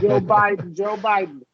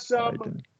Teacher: our president has a glottal D in his name